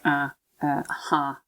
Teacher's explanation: some kind of usually nasalized back vowel